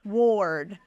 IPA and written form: wɔrd (ward)